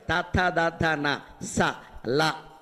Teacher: దంత్యాలు అంటే పళ్ళతో పలికే అక్షరాలు తథ ద ధన స ల అవి వాటిని దంత్యములు అంటారు. ఆ అక్షరాలే